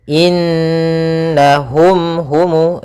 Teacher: suara mimnya harus dibaca dengan jelas dan tidak ditahan. Maka izhar itu artinya jelas, syafawi artinya berasal dari kata syafah yang artinya adalah bibir kita. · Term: izhar syafawi